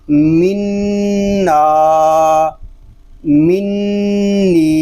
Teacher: نی، منی، اس کو منا، منی اس طرح نہیں پڑھیں گے، صرف غننے کی آواز ناک میں جائے گی، اس کے علاوہ ناک میں آواز نہیں جانی چاہیے